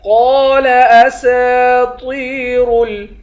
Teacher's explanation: قاف کو موٹا پڑھیں گے، ایک الف کی مقدار کھینچ کر پڑھیں گے